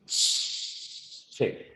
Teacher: con la africada, primero hay un cierre completo y luego el aire sale de manera continua · Fíjate, primero se cierra y luego el aire sale